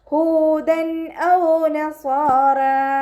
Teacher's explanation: തെൻവീനിന് ശേഷം ഇദ്ഹാറിൻ്റെ അക്ഷരമായിട്ടുള്ള ഹംസ വന്നിട്ടുണ്ട്. തെൻവീനിലുള്ള നൂനിനെ വ്യക്തമാക്കി മണിക്കാതെ ഉച്ചരിക്കുക കേട്ടോ. ഹൂദൻ. നൂനിൻ്റെ സൗണ്ടിനെ വ്യക്തമായിട്ട് കേൾക്കണം.